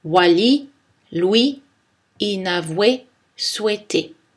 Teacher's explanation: Regardons ensuite le son « wa » et sa graphie. Souvent, la séquence de lettres « o-u » est prononcée « wa » car elle est en situation de glissement quand cette séquence est suivie d'une voyelle